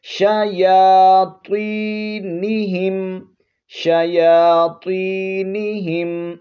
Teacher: شیا یا پر کھڑا زبر ہے، اس کو ایک الف کی مقدار کھینچیں گے، آگے پھر یا مدہ ہے، یہاں بھی ایک الف کی مقدار کھینچنا ہے، نون اور ہا کو نہیں کھینچنا۔